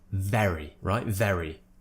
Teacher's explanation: When I say very, I'm really pushing the V sound out. I'm voicing it. There's a strong voiced consonant sound coming out.